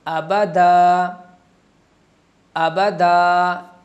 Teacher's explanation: ایک الف کی مقدار کھینچ کے پڑھا جاتا ہے